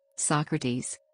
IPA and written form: ˈsɒkrətiːz (Socrates)